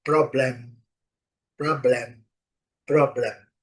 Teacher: a letra M ao final das palavras tem que ser terminada com a boca fechada. Problem.